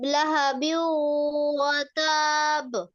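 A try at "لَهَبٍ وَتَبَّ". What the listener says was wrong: এটা কলকলার হরফ তো, এই জন্য দীর্ঘ হবে না, শুধু ধাক্কা হবে, ঠিক আছে? ওই যে কলকলা করলে ওর মধ্যে দেড় হরকত এমনি চলে আসবে। কলকলাটা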